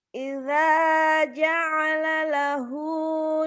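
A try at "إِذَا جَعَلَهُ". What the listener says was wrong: Bukan ja'alalahu, lahnya cuma satu. Idza ja'alahu, bukan ja'alalahu ya. Ja'alahu lahnya satu.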